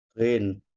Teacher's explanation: Huruf ghin itu ada di sini Pak, di tenggorokan, pangkal tenggorokan